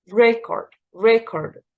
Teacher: the stress here is on the first syllable record record so take care of the pronunciation when you say